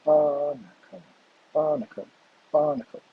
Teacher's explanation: With the stress at the beginning, barnacle.